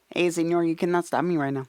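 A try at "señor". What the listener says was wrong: Put a little more nasal on it.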